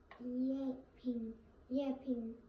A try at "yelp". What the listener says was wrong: Except there's no ing. You keep saying ing. This would be yelping, but we don't have ing at the end. We just have Yelp.